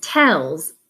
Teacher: The S is just voiced at the end, Z.